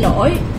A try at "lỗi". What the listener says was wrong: Yeah, lỗi.